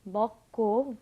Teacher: you kind of want to tense up the sound where it's originating from, and that way it ends up sounding more like the double consonant